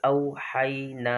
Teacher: حروف لین کو بغیر کھینچے نرمی سے پڑھے، تو نہ او پہ جھٹکا دینا ہے نہ حی پہ جھٹکا دینا ہے